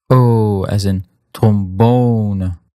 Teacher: it's just going to be an extra long version of that O sound